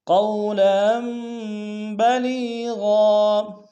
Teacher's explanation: قولا میں قاف کو واو کے سامنے لیں گے، واو لین بغیر کھینچے پڑیں گے · لام کو یا کے سامنے ملائیں گے، یا مدہ ہے ایک امتداد میں کھینچیں گے